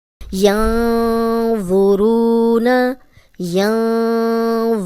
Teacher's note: जज़म वाली वाव पीछे रॉ पे पेश, रू, 2 हरकत लंबा करेंगे, नून की ज़बर को लंबा होने से बचाएंगे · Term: वाव मदा